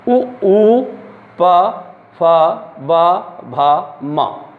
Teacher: इनमें हमें ओष्ठ होठों का प्रयोग करना पड़ता है। अपने होठों की सहायता से हमें इन्हें बोलना पड़ता है।